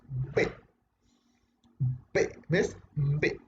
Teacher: por un momento el aire se retiene por completo para luego ser expulsado de manera brusca